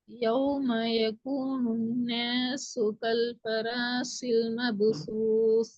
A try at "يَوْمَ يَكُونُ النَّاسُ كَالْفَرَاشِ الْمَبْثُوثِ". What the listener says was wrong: அந்த ஷீட சவுண்ட்ல உச்சரிக்கிறது போதா? படிச்சாச்சு. ஷீல் ஷீட சவுண்ட் வரலையே.